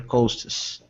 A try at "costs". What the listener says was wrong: Costs. Perfect.